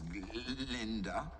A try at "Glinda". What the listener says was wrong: Oh, actually, it's Glinda with a G.